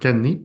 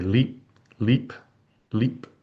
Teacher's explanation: word final consonants in Korean uh tend to be always unreleased